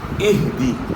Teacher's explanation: ہا کی آواز گلے کے آخر سے